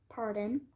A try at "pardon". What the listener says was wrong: The last two words, the D-O-N. I think you're saying dim, like D-E-N.